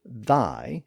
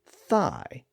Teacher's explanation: there are really two different th sounds in Modern English even though we spell them both the same way again one is voiced and one is voiceless